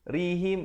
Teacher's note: ri di situ menjadi nipis dan him izhar syafawi, bunyi saja him terus masuk.